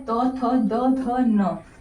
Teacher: ये हमारा दंत से बोला जाता है